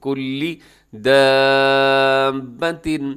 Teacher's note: گا، من کلی، کلے بھی نہیں کرنا آپ نے، کلی دابت، یہاں پہ جو مد ہے اسے کہا جاتا ہے مد لازم، حروف مدہ کے بعد جو ہے وہ تشدید آ گئی